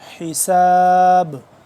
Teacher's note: آخر میں قلقلہ کریں گے کیونکہ با یہاں پہ ساکن ہو جائے گا